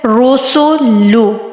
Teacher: next है रोसोलू, रू रॉ के ऊपर क्या है, पेश आ रही है तो हमने रॉ को मोटा अदा करना है